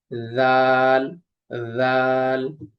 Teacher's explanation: জিহ্বার আগা সামনের উপরে দাঁতের আগার সঙ্গে লাগিয়ে জাল। জাল। তারপরে জিহ্বার আগার পিঠ তার বরাবর উপরে তালের সঙ্গে লাগিয়ে উচ্চারিত হয় র।